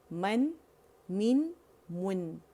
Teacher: جو گونج ہے نا 1 کاؤنٹ کی ناک میں جو صفت لازمہ ہے نون کا وہ فیل کریں